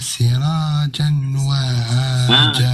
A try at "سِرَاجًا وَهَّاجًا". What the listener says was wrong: Sirajan, bukan sirojan. Sirajan. Bukan jan. Sirajan.